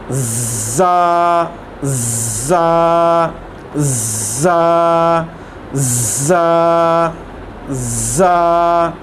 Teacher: ज़ा के अंदर सीटी की आवाज़ आएगी